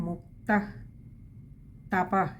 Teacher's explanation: രണ്ടിടത്തും വിസർഗ്ഗമുണ്ട് പകുതി ഹകാരത്തിൽ വായിക്കുക